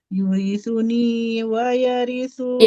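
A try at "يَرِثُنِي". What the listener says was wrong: Yarithuni, ya, bukan yurithu, ya.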